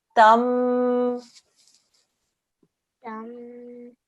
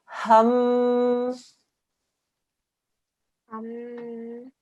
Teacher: Because it's a meme mushaddad, we do a 2-second nasal sound.